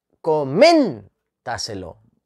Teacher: la última sílaba ce es la penúltima está es la antepenúltima y la sílaba tónica es men